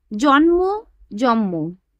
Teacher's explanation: শব্দ মধ্যস্থ দুটি ভিন্ন ব্যঞ্জন ধ্বনি একে অপরের প্রভাবে সমান বা সমতা লাভ করার প্রক্রিয়াকে সমীভবন বলে। এখানে জন্ম শব্দের ন ধ্বনিটি পরবর্তী ম ধ্বনির প্রভাবে পরিবর্তিত হয়ে ময়ে পরিণত হয়েছে